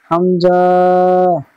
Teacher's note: হামজার মাখরাজ এই হার মতন কণ্ঠনালীর শুরু মানে গলার শুরু হতে উচ্চারিত হয়